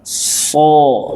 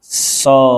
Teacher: Aliran suara dibawa ke dalam. So, gitu ya. Tipis, aliran suara dibawa keluar.